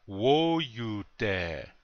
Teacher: the accents on the first syllable